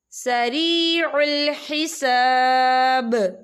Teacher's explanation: جب آیت ختم ہوتی ہے تو وقف کی صورت میں با جو ہے ساکن ہو جائے گا، تو اس پر کلکلا ہوگا